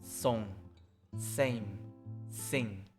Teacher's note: And S with a vowel is stronger, making it similar to 쌍시옷, like song, same, sing.